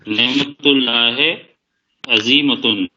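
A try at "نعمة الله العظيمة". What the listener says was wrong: تن کیوں ہو جائے گا؟ ال لگا ہوا ہے نا. نعمت اللہ ہی نہیں ہوگا، نعمت اللہ ہل.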